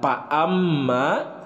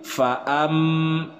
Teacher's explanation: dalam pelafalan huruf fa itu ada suara desisan, ada keluar nafas. Fa bukan pa amma tapi fa am.